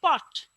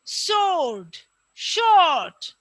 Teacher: যেগুলোর পাশে তোমার দেখা যাচ্ছে দুইটা করে তোমার এটাকে কি বলে, কোলন দেয়া আছে, এগুলোর প্রোনাউন্সিয়েশন হবে লং। যেমন ধরো শর্ট, এই যে পট এর যে অ, শর্ট এরও সেই একই অ, কিন্তু শর্ট এর ক্ষেত্রে অটা হয়ে যাবে লং।